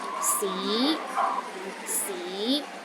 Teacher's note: the second tone start with a low pitch and Rises to a high pitch